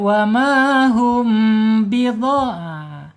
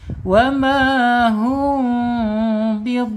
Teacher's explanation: Karakter dia yaitu idha ikhfa syafawi. Ya, ikhfa syafawi hukumnya harus dibaca samar dan ditahan dua harakat